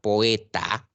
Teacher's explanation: me doy cuenta que la O es abierta y la E es abierta. Entonces los tengo que separar. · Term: hiato simple